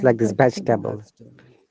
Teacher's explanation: this e after ve, this is Schwa sound, so we don't have to pronounce it.